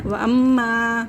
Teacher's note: अलिफ मद्दा, अलिफ से पहले ज़बर अलिफ मद्दा को खींचेंगे